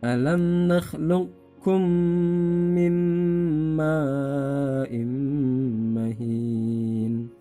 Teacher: Nah, karena ini termasuk huruf idgham atau hukum idgham mutaqarribain, maka qafnya qalqalahnya hilang